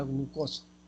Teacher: fonema oclusivo velar sonoro G en la palabra glucosa